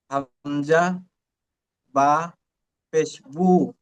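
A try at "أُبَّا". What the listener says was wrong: বু নয়, হামজা বা পেশ উব, উব, বা জবর বা, উব্বা। হামজা বা পেশ উব, বা জবর বা, উব্বা।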